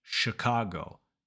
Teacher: So in that first syllable, you're focusing on two things. The very first sound is sh, not ch. Chicago. And that vowel is not e.